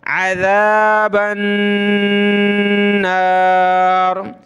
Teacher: وقنا عذاب النار، با کو ملانا ہے نون کے ساتھ، اور نون پر یہ تشدید ہے، اس وجہ سے ہم نے غنہ کرنا ہے